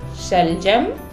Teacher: इसका उच्चारण हमारे तालु से, जीभ जब हमारे तालु से जाके स्पर्श करता है तो इस श का निर्माण होता है, इसे श कहते हैं। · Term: तालव्य श